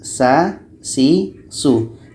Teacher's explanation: Bedanya sama sin. Sin juga sama-sama pada ujung lidah menempel dengan bagian atas gigi seri bawah. Tetapi untuk sa ini lidah kita sedikit terangkat.